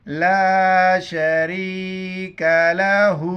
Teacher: کاف زبر کا، چھوٹی کاف ہیں، باریک پڑھیں گے